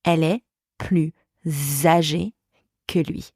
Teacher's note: when plus, plus, is followed by a vowel, a liaison with the sound Z happens. For example, elle est plus âgée que lui.